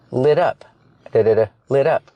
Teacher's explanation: T in lit up it sounds like a fast D